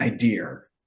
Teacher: So like they they literally would add an R to the word idea to make it idea. >> An intrusive R for no reason whatsoever.